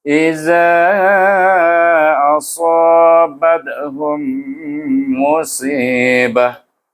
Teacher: Kenapa iza tu saya baca panjang lebih daripada 2 harakah? Iaitu antara 4 dengan 5 harakat. Iaitu kerana huruf alif ini bertemu dengan hamzah. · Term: mad jaiz munfasil